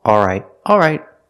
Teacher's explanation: some people don't pronounce the L but they keep the same vowel